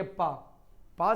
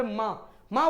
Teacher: पापा बोलते समय आपके जो ओंठ हैं वह परस्पर मिल रहे हैं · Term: ओष्ठ व्यंजन